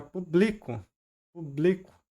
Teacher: se eu movo essa sílaba tônica do pu pro bli, fica publico